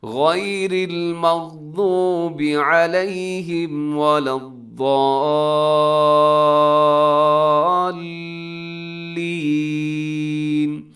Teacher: اپنے ضاد کو آگے لام کے ساتھ ضرور ملانا ہے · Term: تشدید